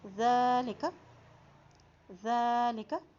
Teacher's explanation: ذال کے اوپر کھڑی زبر ہے، اس لیے اس کو ایک حرکت لمبا ادا کریں گے اور ذال کو نرمی سے ادا کریں گے